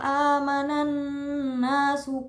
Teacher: Amanan na ada gunah musyaddadah karena nun bertasjid jadi dibacanya ditekan dan mendengung